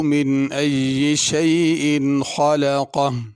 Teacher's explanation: خلقہ میں خا کو بھی پر پڑھنا ہے، قاف کو بھی پر پڑھنا ہے، بڑا قاف ہے۔ آخر میں ہا کی آواز ظاہر ہونی چاہیے۔